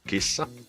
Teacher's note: we just have to prolong the S because it's double s